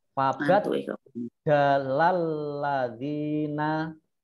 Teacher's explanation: Sama dengan yang jim ini tadi, kolkolah kalau sukun, tetapi karena ini tasjid maka tidak kolkolah